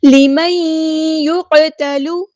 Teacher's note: لِمَن يُقْتَلُ، ادغام کامل یعنی مع الغنہ، ادغام کرتے ہوئے الف کے برابر ہم رکیں گے۔ قاف ہمارا ہیوی ٹیپ پورا ادا کریں گے، قاف ساکن ہے تو یہاں پہ قلقلہ ہوگا، تا باریک پڑھیں گے، لام کی پیش کو ہم لمبا نہیں کریں گے۔